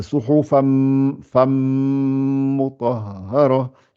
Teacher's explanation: Après le fa, j'attaque le mim tout de suite. Je ne vais pas vers le noun